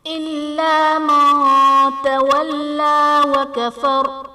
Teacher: تولا میں لام پر کھڑا زبر ہے جو کہ الف مدہ کے قائم مقام ہے، اس لیے اسے ایک الف یعنی 2 حرکات کے برابر کھینچ کر پڑھیں گے